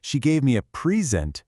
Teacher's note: When you say, she gave me a present, it's a noun, a gift. The stress is right at the beginning.